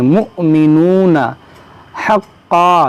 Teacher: यहाँ पर देखें हमज़ा साकिना है, इसको झटका देकर पढ़ेंगे।